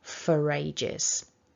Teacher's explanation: I went fairly weak in my example, so for. And we can link this for ages together because of the presence of that linking R and then the A, for ages.